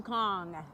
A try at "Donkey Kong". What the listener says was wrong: Donkey Kong. You said Don King Kong. Don King is a manager. Not what it's called. Donkey Kong. You said Don King.